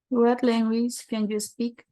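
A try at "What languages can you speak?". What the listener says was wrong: Thank you so much. Can you speak? Perfect.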